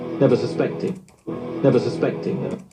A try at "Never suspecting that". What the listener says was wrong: Never suspecting that. 뒤에 that 들어보세요. Never suspecting that.